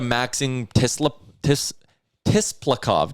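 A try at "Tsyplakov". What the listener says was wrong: Isn't it Siplakov? I believe the T is silent.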